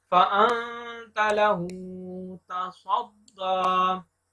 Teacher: दाल को लंबा करके पढ़ेंगे, खड़ा जबर है, इसके ऊपर एक अलिफ के बराबर लंबा करेंगे।